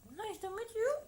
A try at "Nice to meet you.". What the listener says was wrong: Iya, bagus ya, sudah benar ya.